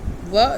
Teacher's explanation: bilabial sound हैं व य, और जब हम बोलते हैं तो हमारे दोनों लिप्स जो हैं वो मिलते हैं